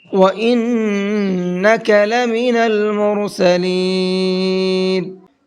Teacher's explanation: وَإِنَّكَ لَمِنَ الْمُرْسَلِينَ، نون کے اندر یہاں پر بھی غنہ کریں گے، اور مرسلین کے اندر را کو پر کر کے پڑھیں گے